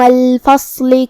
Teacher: صاد حروف التفخیم میں سے ہے تو ہمیں اسے بھاری آواز میں منہ پھلا کے ادا کرنا ہے